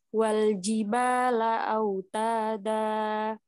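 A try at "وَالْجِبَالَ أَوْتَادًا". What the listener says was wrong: Autada, autada. Jangan terputus,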